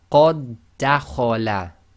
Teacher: because the two dals effectively come together when you do your recitation, we completely ignore the first dal. So it doesn't even have sukun. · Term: merging